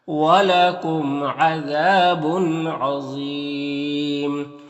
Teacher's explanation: یہاں پر تنوین کے بعد عین ہے، حروف حلقی میں سے ہو تو تنوین میں اظہار حقیقی ہوگا، تنوین کو ظاہر کر کے جلد پڑھیں گے